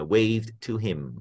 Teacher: 先個 D 同個 T 黐埋一齊個位啊